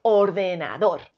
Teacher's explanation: la forma correcta de pronunciar ordenador es con la sílaba tónica en dos